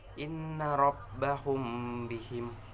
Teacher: Ikhfa safawi yaitu apabila mim mati bertemu dengan huruf ba dibaca sedikit dengung